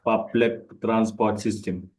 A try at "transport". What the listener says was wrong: Don't pronounce the last R after O, just P-O-T, transport.